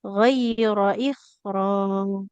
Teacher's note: Ro-nya kan fathah tidak ada alifnya nggak boleh kita panjangkan.